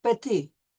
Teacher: We drop the T when we're pronouncing the word for little, petit.